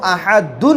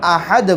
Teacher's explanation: احدن کے بجائے یہاں پر احد بول کے رک جائے۔ اب احد بولنے کی وجہ سے یہاں پر دال کے اوپر جزم آ گیا۔ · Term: وقف